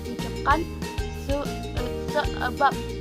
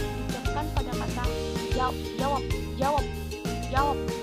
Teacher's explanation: direlasikan sebagai bunyi B atau P apabila berfungsi sebagai coda pada sebuah silabel